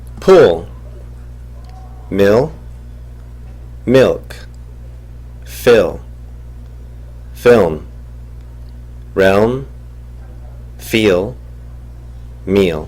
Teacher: 혀끝이 닿지 못하고 후설이 올라오게 되면 영어의 우 소리 비슷한 소리가 납니다. 우리말의 우와 으 소리 중간 소리가 납니다.